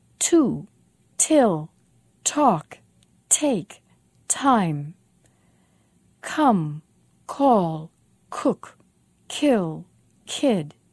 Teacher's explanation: we say them with a lot of force, a lot of air.